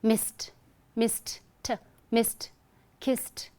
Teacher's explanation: So the ed is to be pronounced as t instead of d.